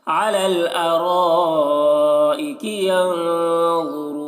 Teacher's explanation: ینظرون یہاں پر ذا اور را دونوں کو موٹا کر کے پڑھنا ہے